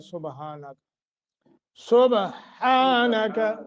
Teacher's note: با پہ قلقلہ ہوگا اور ہا سبحانک نہیں ہے، سبحانک، سبحانک.